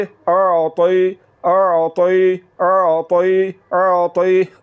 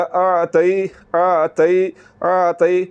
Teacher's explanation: अगर आपने ज़ुबान को तालु की तरफ बुलंद ना किया तो फिर ता की आवाज़ निकलेगी जो कि बारीक है। · आपने ज़ुबान की जड़ और ज़ुबान के दरमियान वाले हिस्से को तालु की तरफ बुलंद करना है या तालु के साथ मिलाना है, तो फिर ता की आवाज़ मोटा करके निकलेगी